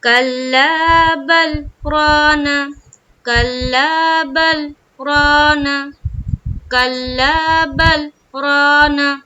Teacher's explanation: اب دیکھ رہے ہوں گے کہ بل اور رانا کے بیچ میں تھوڑی دیر میری آواز رک رہی ہے، اور اوپر دیکھے بل اور رانا کے بیچ میں کیا لکھا ہوا ہے، چھوٹا سا لکھا ہوا ہے سکتہ، سین کاف تا ہا، سکتہ۔